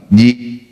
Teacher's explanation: Hamzah punya sifat syiddah, tertahan. Setelah hamzah disukun, tidak ada suara atau bunyi apa-apa lagi.